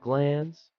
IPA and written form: ɡlæns (glance)